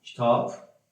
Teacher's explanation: B samiti niyə çevrilir? P samitinə çevrilir.